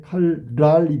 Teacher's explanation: 칼날은 뒤에 것만 바뀌네. 칼랄이 되겠지.